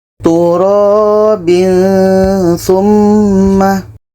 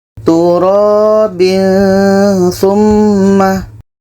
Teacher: Ketika sebut huruf tanwin, kita sudah merasakan huruf tsa. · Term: ikhfa hakiki